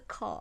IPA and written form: kɑːd (card)